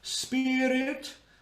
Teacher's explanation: So if I was singing my, I basically say on an ah vowel. Spirit, and you'll flip the R